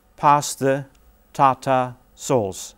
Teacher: there are three feet here and each foot starts with a beat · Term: rhythm